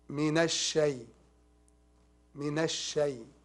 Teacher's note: It's called lam shamsiyah. A lam shamsiyah, we don't recite it.